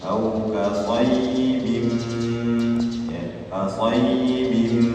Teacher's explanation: Jadi tanwinnya dimasukkan ke mim dengan dengung. Dengung artinya masuk ke rongga hidung. Au kasayyibin ya, kasayyibin itu masuk, proses masuk ke rongga hidungnya ya. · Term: idgham bi gunnah